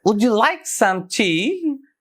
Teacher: unstressed unstressed stressed unstressed and stressed like would you like some tea